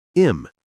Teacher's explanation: Him lost the h sound and became im